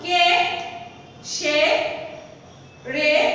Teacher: এক অক্ষর সর্বনাম পদে এ সংবৃত্ত হয়